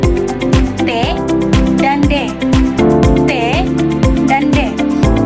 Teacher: dihasilkan oleh lidah yang menyentuh pada gigi atas atau bisa kita sebut dengan alveolar. T dan D. T dan D.